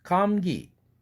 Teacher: 기 할 때 그 사운드는 아주 연한 유성동화 현상을 일으킨 겁니다